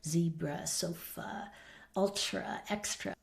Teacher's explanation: they'll be using schwa at the end of a word